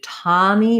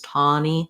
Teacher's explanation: some native speakers may use more of an ah here the the continuum between the ah unrounded and the ah rounded is a little bit flexible in american english